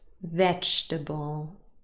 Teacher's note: again the second e is not pronounced